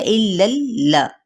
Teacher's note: الا اللہ، لا کہنا ہے، لا بڑھانا نہیں ہے